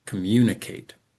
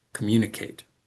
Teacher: the mun and the kate, are pronounced more slowly with a higher pitch and with a clearer vowel sound · We tend to stress in this word the second and then the last syllable